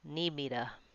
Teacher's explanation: Need me to is reduced. The U in to becomes vowel schwa, and the T becomes a D.